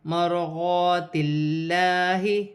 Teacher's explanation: را ساکن سے پہلے زبر ہے، را موٹی پڑھی جائے گی. یہاں الف مدہ بن رہی ہے، اللہ کی لام سے پہلے زیر ہے، اللہ کی لام باریک پڑھی جائے گی.